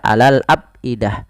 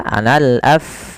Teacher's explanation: alirkan jangan sampai dibaca alal abidah ya tapi dia alal af ada nafas ketika melafalkan huruf fa yang dimatikan